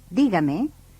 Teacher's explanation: in dígame, the stress falls on the letter I, pronounced E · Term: stressed syllable